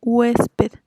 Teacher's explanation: Y aquí la vocal tónica es la fuerte, que es la E.